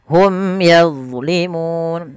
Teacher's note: huruf ini mim yaitu ada bacaan izhar syafai karena bertemu dengan huruf ya harus jelas Suara mimnya kemudian yadlimun nah huruf do hati-hati dalam melafalkan D yang sukun